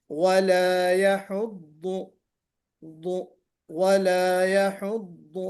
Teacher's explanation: ضاد में इस्तिअला भी है, ضاد में जनाब आपके इतबाक भी है, फिर इसमें इस्तिताला भी है